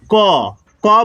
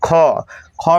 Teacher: क में कम हवा निकल रहा है। बोलिए ख में आपको ज्यादा हवा निकालना है